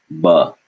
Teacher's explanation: it's a b sound with no air